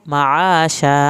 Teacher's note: आइन को हल्क से पढ़ के अलिफ पूरी पढ़नी है